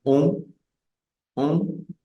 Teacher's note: cada vez que tengamos una O y una N, no vamos a decir on como en español, sino vamos a decir on, que es una vocal nasal, saldría el sonido básicamente enfocado en esta zona y sería on, on.